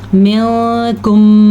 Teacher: یہاں پہ اخفا ہو رہا ہے کیونکہ نون ساکن کے بعد حروف اخفا میں سے کاف آیا ہوا ہے · اس قاعدے کو ادغام شفوی کہتے ہیں، میم ساکن ہو اور اس کے بعد میم متحرک آ جائے تو یہاں پہ غنہ کریں گے۔ منکم مرضى، را کو ساکن اور پہلے حرف کے اوپر زبر ہونے کی وجہ سے را کو ہم پر پڑھیں گے۔